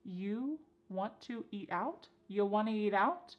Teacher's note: And then we have reduced want to to become wanna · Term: reduction